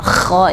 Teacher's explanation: k ini ada angin yang berhembus banyak